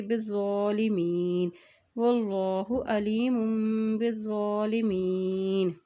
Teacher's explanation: کھڑی زبر کو ایک حرکت لمبا بھی ادا کریں گے